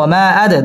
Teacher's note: দাল কলকলার হরফ ধাক্কা দিয়ে পড়তে হবে